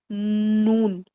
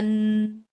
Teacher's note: پھر نون دیکھیں، نون میں زبان کی جو ٹپ ہوتی ہے وہ اوپر والے تالو میں دانتوں کے پیچھے لگاتے ہیں ہم